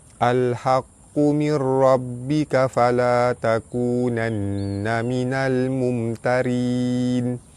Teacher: Alif lam bertemu dengan ha, alif lam qamariyah, lam dibaca jelas. Nun mati bertemu dengan ra, idgham bila gunnah. Cara baca dia masuk tanpa dengung. Ra baris atas dibaca tebal.